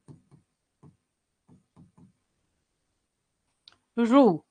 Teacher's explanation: દાંતથી આગળનો જે ઉપસેલો ભાગ હોય ને ત્યાં તમારી જીભ પટકાય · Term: મૂર્ધા